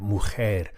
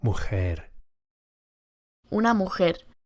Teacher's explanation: Notice the Spanish J sound, mujer. It's similar to an English H as in help or hair, but with a slightly more raspy effect produced at the back of the mouth. Mujer. Una mujer.